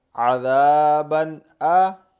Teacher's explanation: با دو زبر بن، یہ تنوین ہے اور تنوین کے بعد حمزہ حروف حلقی میں سے آ رہا ہے، تو یہاں ہم غنہ نہیں کریں گے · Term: اظہار